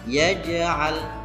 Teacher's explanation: huruf jim harus dibaca memantul. Tapi memantulnya tidak boleh berlebihan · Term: qalqalah sughra